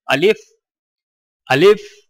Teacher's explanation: آ کو بغیر کھینچے لام کو فا کے ساتھ فوراً ملائیں، یعنی الف، الف۔